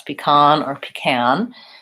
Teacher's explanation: I also have heard pecan with the ah vowel. And I think in both cases, it's second syllable stress